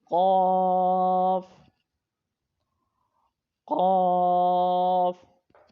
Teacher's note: اگلا حرف ہے قاف، قاف، حروف مستعلیہ موٹا پڑا جائے گا اور اس کا مخرج ہے حروف لہویہ یعنی کہ زبان کی جڑ اور تالو کا نرم حصہ، زبان کی جڑ اور تالو کے نرم حصے سے یہ حرف پڑھا جائے گا